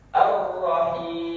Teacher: Ar-Rahim, suara i itu keluarnya di al-jawf. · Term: huruf mad